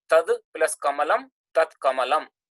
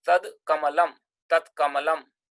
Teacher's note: Dakara is the voiced consonant, kakara is the unvoiced consonant. So dakara becomes takara, corresponding unvoiced consonant.